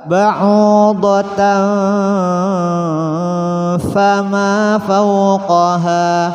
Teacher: ada tanwin bertemu fa, hukumnya ikhfa. Caranya masukkan suara tanwin pada fa.